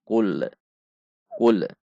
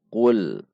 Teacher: memantul adalah cooler full seharusnya tidak ada pantulan namun ada sifat bainiyah saja pada huruf lam yaitu cool tahan detik lem sampai Anda mengucapkan huruf yang ada